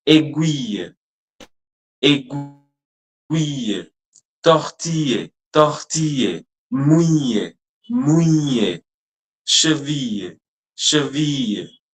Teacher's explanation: Just roll the I sound a little longer with a Y touch at the end. · Pay attention to that IL combination where the L sound is silent and the I is rolling.